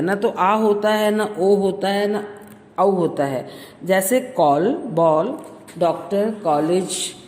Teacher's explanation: इस ध्वनि का प्रयोग केवल अंग्रेजी शब्दों में किया जाता है। इसका उच्चारण आ और ओ तथा औ के बीच का होता है। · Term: आगत ध्वनियाँ